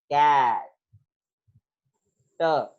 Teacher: यानी कि जब वो कॉन्सोनेंट साउंड जो है वो एंड ऑफ द सिलेबल पर सिलेबल के लास्ट पे आएगी, जैसे कैट, आप ये देख सकते हो ट के बाद आपकी साउंड मजीद रिलीज नहीं होगी, कैट ट, जब आपने ट प्रोनाउंस कर लिया there is no releasing of sound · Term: arresting consonant